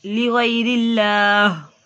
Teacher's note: اللہ عز و جل کے نام سے پہلے حرف کے نیچے زیر تو اللہ عز و جل کے نام کو باریک پڑھیں گے